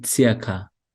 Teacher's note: R com som de A, um leve A, né? Circa.